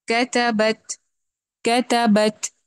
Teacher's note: با میں جہر ہے، اور تا میں تھوڑا واضح ہو رہا ہے ہمس